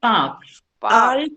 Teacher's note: This is park. R sound नहीं है इसमें कहीं पे भी. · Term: No R sound